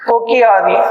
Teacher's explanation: அந்த ஒரு மாத்திரையிலிருந்து எத்தனை மாத்திரையா குறைந்து ஒலிக்கும்னா அரை மாத்திரையாக குறைந்து ஒலிக்கும் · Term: குற்றியல் லிகரம்